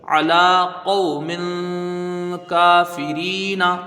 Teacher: کاف میں کھڑا زبر ہے، ایک الف کی مقدار کھینچ کے پڑھیں گے۔ فا کے نیچے زیر ہے، اس کو جلدی پڑھا جائے گا۔